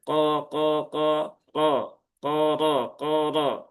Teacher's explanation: Qof ini huruf istilla ya pastikan tebal.